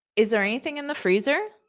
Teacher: So this can be a rising intonation because it's a yes, no.